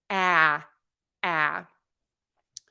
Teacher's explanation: is that very wide open circle mouth sound in American English your tongue tip is low the back is pulled up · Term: ah sound